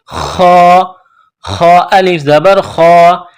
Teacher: خا کو موڑا کرنا ہے، جس طرح بلغم نکالتے ہیں گلے سے